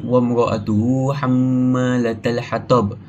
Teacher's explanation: Hukum tajwid yang kita boleh jumpa ialah antaranya adalah mad silah qasirah, iaitu pada perkataan wa mra'atuhu. So kita perlu panjangkan hu tu dengan 2 harakat